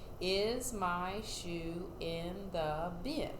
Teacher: did you hear my voice go up at the end that means i'm asking a question